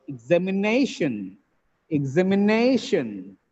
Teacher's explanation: The word has 5 syllables. The penultimate syllable is stressed here.